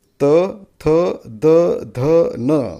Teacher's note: दाताला जीभ लावल्याशिवाय त थ द ध न म्हणताच येत नाही.